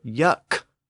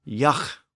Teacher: that the air just flows through it's not stopped so yuck with a K the sound is stopped but Yak with this breathy fricative the the sound is more continuous so that's how linguists categorize